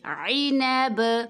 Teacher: با کو ساکن کر کے یہاں پہ ہم قلقلہ کریں گے